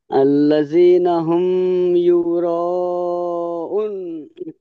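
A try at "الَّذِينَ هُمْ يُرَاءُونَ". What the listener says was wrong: উনটাও টেনে বলবেন। উন ইউরাউন।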